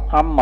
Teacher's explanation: نون اور میم قریب المخرج تھے، نون کو میم بنا دیا گیا، پھر میم کا میم میں ادغام کر دیا گیا